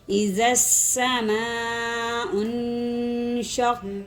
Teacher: اس لیے کھینچیں گے، اذا السماء پر غنہ کر دیں گے، نون ساکن کے بعد شین آ رہا ہے، حروف اخفائی میں سے غنہ ہوگا